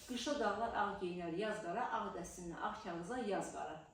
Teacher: Dodaqlar bir-birinə dəymədi. Çünki o şeirin tərkibində M, B, P iştirak eləmir. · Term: Dodaq dəyməz